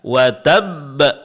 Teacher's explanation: Karena di sini huruf bnya bertasydid. Ketika kita berhenti, qalqalahnya mesti diberikan tekanan. Karena ini disebut dengan qalqalah kubra.